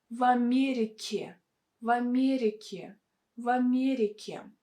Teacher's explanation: you can stick actually to a sound E with a softened consonant K. K, K. В Америке, в Америке, в Америке.